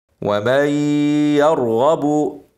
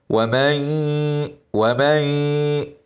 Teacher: واسرع ان شاء الله ومن يرغب نون ساكنه بعدها حرف الياء ادغام ناقص بغنه هندغم النون في الياء مع الغنه